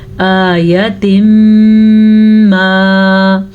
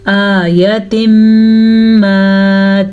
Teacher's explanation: تنوین کے بعد یمون میں سے میم آیا ہوا ہے تو ہم ان دونوں کو آپس میں غنے کے ساتھ ملا کے پڑھیں گے. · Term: ادغام بالغنہ